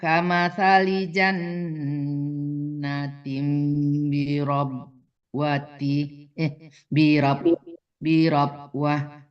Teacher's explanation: Wa mathalul ladzina yunfiquna amwalahum ibtigha'a mardatillah wa tathbitan min anfusihim kamathali jannatin birabwat Kalau berhenti Bunda ya wah, jangan wat ya, karena itu tanya tamabutah ya, dimatikannya ha bukan ta ya Bunda ya